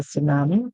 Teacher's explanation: the T is silent, and the word in pronouncing it actually starts from the S sound